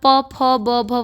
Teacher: प फ ब भ वाला पूरा वर्ग किससे बोला जाता है होठों से बोला जाता है